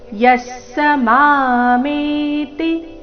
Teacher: ಯಸ್ಸ ವಿಸರ್ಗದ ಅರ್ಧಸ ಮುಂದಿನ ಪೂರ್ತಿಸ ಒಟ್ಟಿಗೆ